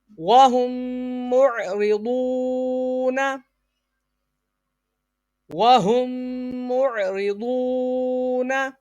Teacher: میم ساکن کے بعد دوسری میم آ جائے تو ادغام شفوی یعنی غنہ ہوگا